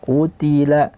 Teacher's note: qu tebal Ti tipis lam tipis ta tipis lam tipis